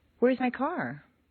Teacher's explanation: usually a question will step upward until the very end where it takes one quick little downward step. A question rises a little higher than a statement with the same intonation pattern.